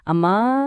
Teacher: ದೂರದಿಂದ ಯಾರನ್ನಾದ್ರೂ ಕರೆಯುವಾಗ ಅಮ್ಮಾ ಅಂತೀವಲ್ವಾ, ಅಥವಾ ದುಃಖದಲ್ಲಿ ಓ ದೇವ್ರೇ ಅಂತ ಎಳೆದ್ ಹೇಳ್ತೀವಲ್ವಾ, ಅದೇ ಪ್ಲುತಸ್ವರ